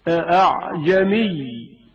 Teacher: یعنی حمزہ کو آسان ادا کرنا، دوسرے الفاظ میں الف اور حمزہ کی درمیانی آواز نکالنا۔ أعجمي، اور اس کلمے کا دوسرا حمزہ تسھیل کے ساتھ پڑھا جائے گا۔ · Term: تسھیل ہمزہ